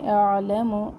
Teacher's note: عین کو وسط حلق سے نکالے